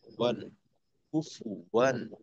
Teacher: ওয়াও দুই জবর ওয়ান, তো এইখানে ওয়ান পড়লাম কারণ আমরা তানভিনের পরে হামজা পাইছি, যেটা কিনা ইজহারের হরফ, গুণনাও হবে না, কিছু হবে না, স্পষ্ট করে ওয়ান